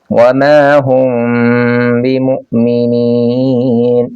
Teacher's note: یہاں پہ میم ساکن کے بعد جب با آ جائے تو میم کو آپ نے اخفا کے ساتھ ادا کرنا ہے۔